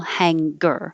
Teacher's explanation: Most of the general English doesn't have the hard g in the middle